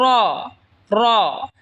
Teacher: র জিহ্বার আগার পিঠ তার বরাবর ওপরে তালের সঙ্গে লাগায় উচ্চারণ হবে র।